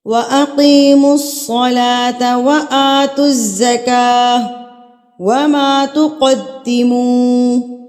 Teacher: قاف کو آپ پر کر کے پڑھیں گے کیونکہ یہ حروف مستعلیہ میں سے ہے. قاف پر کر کے پڑھا جاتا ہے، باریک اس کی ادائیگی آپ نہیں کریں گے.